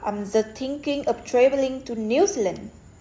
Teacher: the word New Zealand is the most prominent because it provides the new information to the listener.